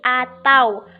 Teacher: pergantian dari vokal u menjadi konsonan w menjadi atau